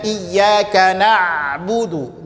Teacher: Jadi huruf ain ini ketika kita baca, maka tidak akan kita rasakan bahwasanya mengalir nafas, tidak. Ya, contohnya iyyaka na'budu, maka tidak kita rasakan berhubungan dengan nafas. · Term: jahar